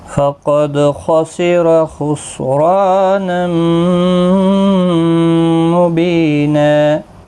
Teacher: تنوین کے بعد یرملون کا میم آئے، ادغام مع الغنہ ہوگا · خا حروف مستعلیہ ہے، پر پڑھا جائے گا ، رو زبر کی وجہ سے پر پڑھا جائے گا، یہاں · گا، یہاں پر بھی خا مستعلیہ ہے، پر پڑھا جائے گا، را پر پڑھا جائے گا زبر کی وجہ سے ، الف مدہ بھی ہے، ایک الف کی مقدار کے برابر